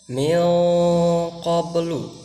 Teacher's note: jadi di sana nun itu samar dibacanya, jadi kurang jelas. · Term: ikhfa